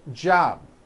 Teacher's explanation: you may be saying job without a b sound or the B is so weak you don't even hear it